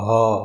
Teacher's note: હ બોલો ને તો જીભ તમારી ક્યાંય અડશે નહીં. આમ ગળું વાઇબ્રેટ થશે, એટલે કે આમ એનું કંપન થાય ને એવું થશે અને હ એવો અવાજ આવશે.